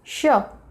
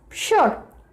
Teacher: It's not S it's SH and the R sound is very light.